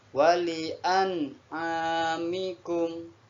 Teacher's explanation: Ada nun bersukun lagi, di depannya ada huruf ain. Nah, nun sukun bertemu ain, maka disebut bacaan idhar halqi. Bacanya jelas.